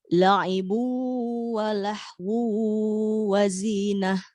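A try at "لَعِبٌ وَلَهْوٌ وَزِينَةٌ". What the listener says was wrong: Oke, sekarang huruf H-nya besarkan. La'ibu wa lahu wa zinah.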